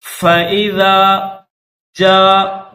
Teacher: جیم کے بعد الف مدہ ہے، مد متصل 5 سیکنڈ کھینچیں گے